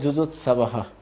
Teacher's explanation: বিসর্গ হচ্ছে হ, আর সেটি অল্প প্রাণ স্বর হবে, হ হ পূর্ণ হ উচ্চারণ না হবে হ, যেমন বলা হয়েছিল যুজুৎসবহ।